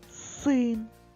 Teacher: а один син і звук и чітко чуємо під наголосом